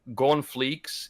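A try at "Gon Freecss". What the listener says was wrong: Gon is on fleek, but it's freaks. It's freaks. It's freaks. R's and L's, yeah.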